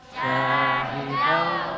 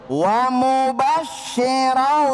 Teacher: Dengungnya di mana? Hidung, khayshum ya kan? Di hidung.